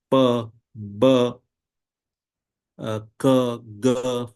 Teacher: for these sounds, there is a complete blockage